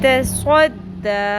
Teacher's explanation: صوت کو پر کریں، تا کو باریک رکھیں